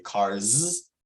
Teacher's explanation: that S at the end is actually pronounced more like a z